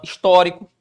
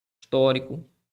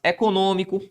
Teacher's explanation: uma palavra cuja sílaba tônica ocupa antepenúltima sílaba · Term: proparoxítona